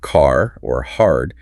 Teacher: >> The biggest tell for ae is the rotic r. The r sound is pronounced clearly after vowels.